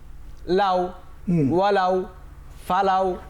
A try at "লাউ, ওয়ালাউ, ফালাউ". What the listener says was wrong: এখানে তোমার একটু ভুল হচ্ছে। ওয়াও হরফটির যে মাখরাজ, এটি কিন্তু দুই ঠোঁট গোল করার দ্বারা উচ্চারিত হয়। লেউ, আউ, লেউ, ওয়ালাউ, ফালাউ।